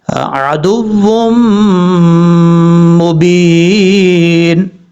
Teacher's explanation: ہیں، دو پیش کی تنوین کے بعد میم آ رہا ہے، یہاں پر ادغام یرملون ہو رہا ہے، اور ایک الف کی مقدار غنہ کر کے پڑھا جائے گا ، عدو مبین، اس طریقے سے۔ اگر یہاں پہ سٹاپ کریں